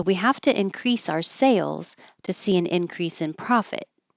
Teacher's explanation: anytime you're contrasting two things they need to stand out in this case it's sales and profit